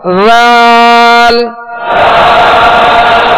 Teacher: اب اس میں زال یعنی سختی کی آواز پیدا نہ ہو، سیٹی کی آواز اس میں پیدا نہ ہو، اس بات کا خیال رکھیے گا. زال بالکل نرمی کے ساتھ.